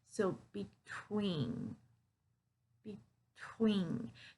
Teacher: So you hear that stress on the tween part.